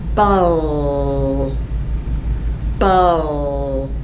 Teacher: the L sound does not require a pucker. It only requires that you raise your tongue to the L position and touch right here.